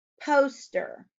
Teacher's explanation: Poster has a long O sound in the first syllable.